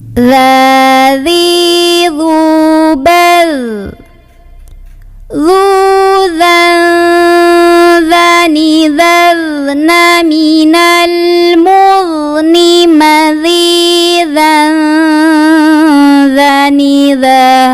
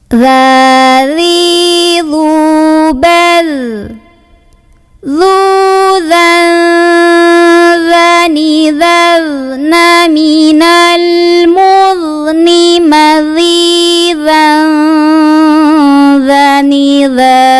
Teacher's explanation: Hati-hati, dzalnya nggak boleh mantul, yang sukun dialirkan suaranya.